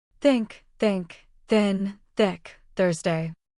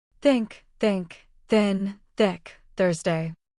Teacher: For these words, your throat does not vibrate. Only air comes out. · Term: second th